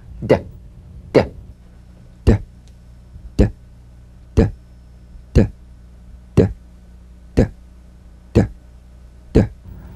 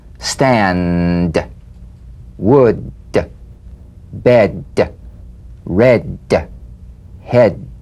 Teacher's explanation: Voiced tongue front palatal stop consonant. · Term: D drum beat